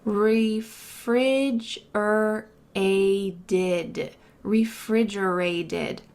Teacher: that final T is going to sound like a D in American English because it's surrounded by vowels